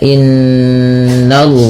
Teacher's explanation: Ya baniya innallaha pada lafal inna di sini ada bacaan ghunah yang di mana suara nnya ditahan dua harakat